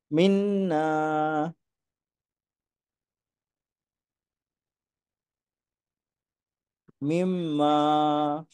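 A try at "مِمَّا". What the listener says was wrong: ওই মিমের উপরে কিছুটা অপেক্ষা করতে হবে, ওটা বলেন।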